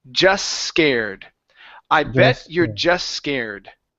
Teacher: the T will disappear here don't worry about saying it you want to connect these s sounds